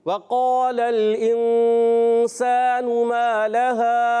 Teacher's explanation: होंठों की गोलाई से याद रखना है। और काफ उर्फ़ मुस्तालिया में से मोटा अदा करेंगे काफ पुर रहेगा। और जिसका मखरज ज़बान की जड़ और तालु का नरम हिस्सा। · और अलिफ मद्दा पूरा करेंगे। मा लहा हरफ मद्दा जहाँ है वहाँ खींच कर अदा करेंगे।